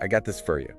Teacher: And the word for becomes fur. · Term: weak forms